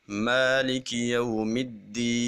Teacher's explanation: مد عارض وقفی کے اندر 5 الف کے برابر مد کرنا یہ زیادہ اولیٰ ہے، زیادہ بہتر ہے۔ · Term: مد طول